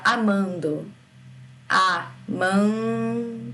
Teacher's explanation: meio de uma palavra por exemplo ele dá um som nasal me falem a palavra amando amando o som sai pelo nariz